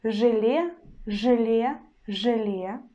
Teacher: So for example, in the word желе, желе, желе, you see we've got vowel letter е, but we pronounce it as э. It's one sound pair э, but ж we still pronounce in a hard way.